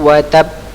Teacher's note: Ya, ini qalqalah. Tadi wa tab ditahan, ya, tahan sebentar karena dia ada tasydidnya. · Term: qalqalah kubra